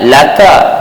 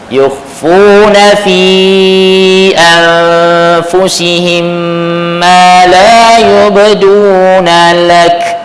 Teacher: Bila jadi sukun aridi maka dia kena bunyi hamas sebab dia sukun lah kat situ.